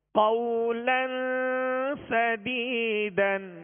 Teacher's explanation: آگے قولن، لام پر دو زبر کی تنوین ہے، آگے سین ہے، سین حروف اخفا میں سے ہے لہذا یہاں پر غنہ کر کے پڑھیں گے